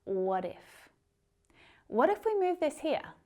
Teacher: That T sounds like a D. It's that flap T sound.